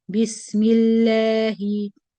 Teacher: So the lam in the word Allah is light here or tarqiq because the previous is mim kasra.